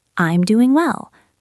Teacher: Notice how the G at the end of doing is often very soft or even disappears.